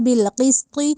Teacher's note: قسط کا جو قوف ہے وہ ہم نے موٹا کر کے پڑھنا ہے، قسطی نہیں کہنا، یعنی ڈنڈے والی کاف نہیں بنانا، یہ نقطے والی قاف ہے تو اس کو موٹا کر کے پڑھنا ہے بالقسط۔ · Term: موٹی قاف